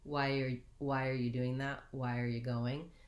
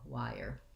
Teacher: they reduce the r just into an er so we have again we end up with the ire diphthong